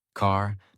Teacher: In American accent, you clearly hear the R. Car, not ka, but car. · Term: American R sound